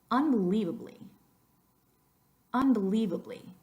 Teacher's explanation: in that word the leave is the number one most emphasized syllable